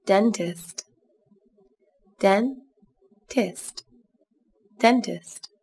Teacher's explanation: Các bạn lưu ý, từ này có 2 âm tiết, trọng âm rơi vào âm tiết đầu tiên nhé.